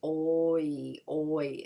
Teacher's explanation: you go from rounded lips to spread lips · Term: diphthongs